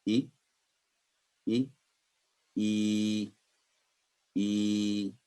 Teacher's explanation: اس حرکت کو کسرہ والے حرف کی نسبت یعنی جو زیر والے حرف ہوگا اس کی نسبت 2 سیکنڈ لمبا کر کے ادا کیا جاتا ہے. کسرہ اشباعیہ والے حرف کی آواز انگلش میں ای کی طرح ہوتی ہے.